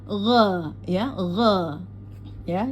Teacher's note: Jadi dinaikkan ee pada pengucapan huruf rnya syarri gho masuk ke g ada di ujung tenggorokan ya. Jadi eh seperti kita berkumur g ya g ya jelas syarri gho syar jadi ee pada ro yang bertasdid jangan dipanjangkan, hanya di ee naikkan aja nadanya ya di jadi ada penekanan pada ro yang bertasdid. · gha ada di ujung tenggorokan ya. Jadi seperti kita berkumur gha ya, gha ya, jelas.